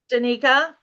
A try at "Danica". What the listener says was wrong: And it's Danica with a long A.